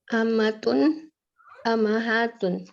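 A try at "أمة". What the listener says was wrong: Amma. Tinggal dipanjangin aja, nggak ditambahin huruf awal. Ammatun. Ammatun. Nah, jadi beda dengan ummahat ya. Ummun, ummahat. Tapi kalau ammatun, tinggal dipanjangkan. Ammatun.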